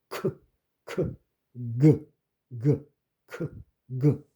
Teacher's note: 혀 뒤를 부드러운 입천장에 대고 공기를 막았다.